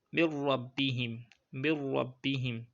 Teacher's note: ra does not have ghunnah